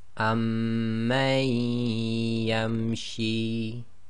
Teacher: So effectively you drop the Noon Saakin sound and join the Ma to the Ya, as if Ya's got a Shadda. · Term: Idghaam